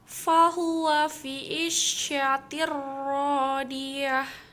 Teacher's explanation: Karena ada tanwin yang bertemu dengan huruf ro. Cara membacanya masuk, tidak mendengung. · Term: idgham bila gunah